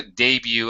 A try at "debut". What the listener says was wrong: The T is silent. Debut. No T.